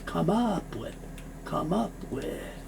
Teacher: No sound for the E, so the M moves over.